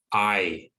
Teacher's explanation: one part of the mouth and moves to the other so it starts at the bottom front of the mouth and moves to the top of the mouth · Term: diphthong